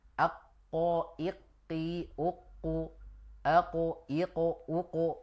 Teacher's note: makhraj huruf qof itu sebenarnya adalah di ujung lidah. Maksudnya bukan ujung depan, tapi ujung belakang.